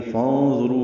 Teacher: نون ساکن کے بعد ضا کی وجہ سے اخفا ہے، ضا پر ہے، رو پر ہے، رو و مدہ ہے، 2 حرکات لمبا ہے رو.